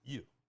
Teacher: And this new word, yu, is yu, and again, it's fourth tone mark, so the fourth tone mark goes down sharply